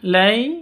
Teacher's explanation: sifat Lin itu harus lentur lemas tidak boleh disentak